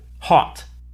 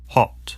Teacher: the american o sound is an unrounded vowel ah while the british o sound is rounded oh